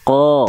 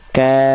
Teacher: Q dari pangkal lidah yang yang paling dalam ya huruf Kaf dari pangkal lidah yang dia agak ke tengah langit-langitnya · kalau huruf Kaf dia agak maju ke depan